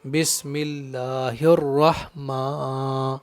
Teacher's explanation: یہاں را پر زبر ہے تو را کو موٹا کر کے پڑھیں گے اور یہ ہا ہے تو اچھی طرح سے ہا کو ادا کرنا ہے، جیسے بسم اللہ الرحمن میم پر مد صلہ کا قاعدہ ہے، یعنی کھڑا زبر ہے میم کے اوپر تو ایک الف کے برابر کھینچ کر پڑھیں گے